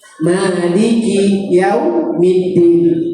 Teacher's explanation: Maliki yaumiddin itu ma tu wajib dua harakat saja.